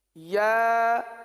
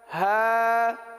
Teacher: تو ایک ایک حرف الگ الگ کر کے دیکھیے، یا ہا با، جی یعنی ایک حرف ادا کریں، تھوڑا سا رک جائیں، اگلے حرف کو اس کے مخرج سے ادا کرنے کے لیے یہ رکنا ہوا، کیونکہ یا جو ہے یہ وسط لسان وسط تالو، زبان کے درمیان اور تالو کے درمیان سے ادا ہوتا ہے، اور ہا جو سینے سے متصل حلق ہے یہاں سے ادا ہوتا ہے